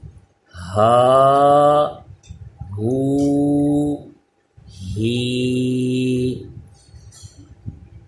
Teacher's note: یہ ہا حلق کے نیچے سے ادا ہوتا ہے، اس میں سانس کی آواز بالکل مکس نہیں ہونی چاہیے